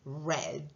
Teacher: Y ven que la R, para hacer la hagan, están poniendo la lengua hacia arriba, sin tocar del todo, pero por eso se llama retrofleja, porque está la lengua enrollada hacia atrás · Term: r refleja, R retrofleja